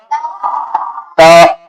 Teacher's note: जबान की नोक को ऊपर वाले दो दांतों की जड़ में लगाओगे